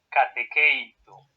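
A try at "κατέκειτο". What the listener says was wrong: El acento debe ir sobre esta épsilon. Me estás diciendo catequeito como si fuera catequesis, pero es catequeito.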